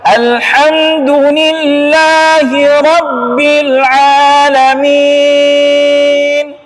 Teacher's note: Vokalnya I, kalau I ya I, nggak ada E, gitu kan?